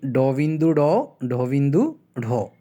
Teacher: জিভের আগা দাঁতের মাড়িতে গিয়ে একটু টোকা দেয় অথবা তাড়না সৃষ্টি করে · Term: টোকাজাত ধ্বনি